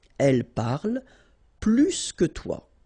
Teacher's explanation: remember, plus will be with the S. So pronounce it plus que.